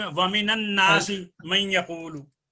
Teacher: اور من جو حرف جر ہے اس کے بعد جب کوئی حرف ساکن آئے گا تو نون مفتوح پڑھا جائے گا